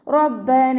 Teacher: നൂനിൻ്റെ കൂടെ അലിഫ് മദ് വന്നു, 2 കൗണ്ട് നീട്ടിക്കൊടുക്കുക